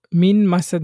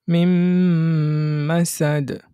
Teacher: আমরা প্রথম নুনটাকে গুরুত্ব না দিয়ে পরের যে হরফ আছে সেটার উচ্চারণ করি।